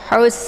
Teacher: di tenggrokan bagian tengah sejajar dengan huruf Ain ya waus kemudian sinnya ini karena sifatnya adalah safir jadi safir itu desis anginnya itu agak jelas